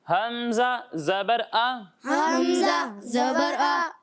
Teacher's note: جب ہم ہا اور حمزہ کی ادائیگی کریں گے تو ان دونوں کو حلق کے نیچے والے حصے سے پڑھیں گے